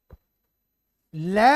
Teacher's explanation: पार्श्विक, पार्श्व प्लस में इक, दो शब्दों के युग से बने। जब लय का उच्चारण करते हैं तो जिह्वा है वो दांतों की जड़ के पास से स्पर्श करती है, लय बिल्कुल दांतों के जड़ में चली जाती।